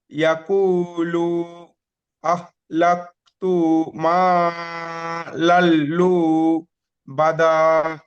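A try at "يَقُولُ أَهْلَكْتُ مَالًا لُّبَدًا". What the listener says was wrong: জি, লুটা একটু টান হয়ে যাচ্ছে, ওটা যাতে টান না হয়, ঠিক আছে, খেয়াল করবেন। ইয়াকুলু আহলাকতু মালাল লুবাদা। ইয়াকুলু আহলাকতু মালাল লুবাদা। ইয়াকুলু আহলাকতু মালাল লুবাদা।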